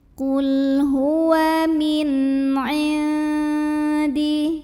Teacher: cara baca nun sukunnya adalah dibaca dengan jelas bunyi n-nya, idhar, ya. Dan tidak perlu ditahan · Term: idhar halqi